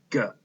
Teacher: now let's remember that g is a consonant sound it's voiced and it's also the hard sound for G